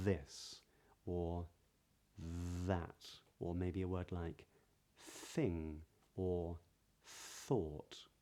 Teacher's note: Firstly, you can see my tongue in between my teeth, but also, can you hear how the TH sounds, because there are two, and I'll come back to that in a moment, are sort of long. My tongue is touching so lightly that the sound is allowed to escape over the tongue when I make it.